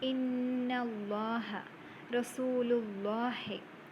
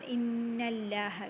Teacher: That is, when a fatha or dhamma appears on the letter before the word Allah, the lam in the word Allah is pronounced heavily with a full mouth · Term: tafkhim